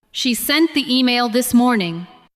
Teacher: Stress sent, email, and morning.